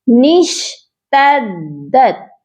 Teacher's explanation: ٹھیک ہے، تو ہم نے دال کو سختی سے پڑھنا ہے، تا کو دال کے ساتھ سختی سے ملا کر پڑھا جائے گا نشتدت. اوکے، دال کو 2 بار پڑھا جائے گا اور سختی سے پڑھا جائے گا